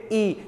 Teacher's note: का तो करो एक बार उच्चारण करके देखिए ई तो लगभग हमारा मुख जो है बहुत कम खुलता है लगभग बंद होने की कगार प है बात समझ में आई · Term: संवृत स्वर